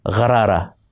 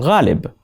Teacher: Gha is pronounced lower in the throat, where the other Urdu sound kha and qa are pronounced.